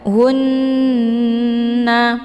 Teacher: dengan Mad Thobi'i muqaddar kemudian hunna ada tasdid di huruf nun ini dinamakan dengan ghunnah musyaddadah cara bacanya didengungkan